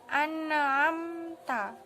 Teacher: bacaan yang seharusnya dibaca mendengung atau dipantulkan